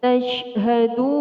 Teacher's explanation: Di sini adalah hukum bacaan mad, yaitu mad ardil sukun, panjangnya 1, 2 sampai 3 alif atau 6 harokat atau kira-kira 6 ketukan. Dan mad ardil sukun ini selalu berada di akhir ayat.